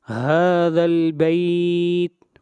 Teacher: ہا کے اوپر کھڑی زبر ہے، ہا کو 1 الف کے برابر لمبا کریں گے، اور اس مد کو مد اصلی کہتے ہیں۔